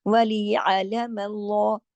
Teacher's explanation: اللہ کے لام کو ہم نے لام جلالہ کیا، لام کو موٹا کیا · عین کو گلے سے پڑھنا ہے، حلق سے